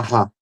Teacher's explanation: O som de R aqui numa sequência como Ra esse som vibrante, OK? E a vibração fica nítida ali